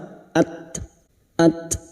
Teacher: ta sukun ini memiliki sifat Hames dan syidah maka ada suara